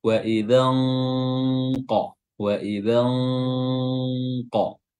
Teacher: Cara menyamarkannya adalah dengan meletakkan huruf, dengan meletakkan makhraj pada huruf atau makhraj huruf qaf, dan makhraj huruf qaf adalah di pangkal lidah. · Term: ikhfa